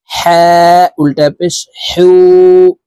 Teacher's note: এই হার উচ্চারণ হলকের মধ্যখান থেকে পড়তে হবে। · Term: বড় হা